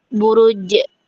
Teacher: Dia nafasnya tertahan, nggak ada nafasnya. Kemudian juga suaranya tertahan. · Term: syiddah majhuro